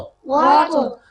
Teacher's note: طا کی ادائیگی کے لیے دونوں حصے ملے، زبان کی نوک اور دانتوں کے جو ہیں مسوڑے وہاں لگے اور اس کے بعد علیحدہ ہو گئے